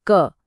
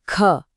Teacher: अल्प प्राण मतलब कम हवा, अ स्मॉल जेंटल पफ, और महाप्राण मतलब ज्यादा हवा, a strong burst of air, जिसमें एक ह के साउंड जुड़ी होती है। · अपना हाथ मुंह के सामने लाइए और बोलिए क। हल्की सी हवा लगी। अब बोलिए ख। देखा ख में हवा का एक जोरदार पफ आया। बस यही है प्राणत्व।